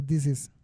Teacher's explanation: Por ejemplo, this is, que normalmente se pronuncia this is, se junta la S con la I de la siguiente palabra y se pronuncia pegada